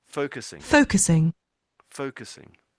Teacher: you need to emphasize the foe a little bit more make the foe a bit stronger can you make that stronger because when you're not doing that it sounds like the swear word a bit more.